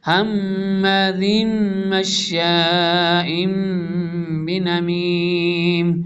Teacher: تنوین کے بعد میم آ رہا ہے تو ادغام ہوگا بدغنہ ، نون میم مشدد اور نون مشدد، ادغام مع الغنہ ہوتا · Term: ادغام بدغنہ